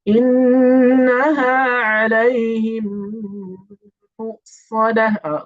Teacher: So the noon here is a noon مشددة. The noon that has a shaddah pronounced with two counts and with ghunnah.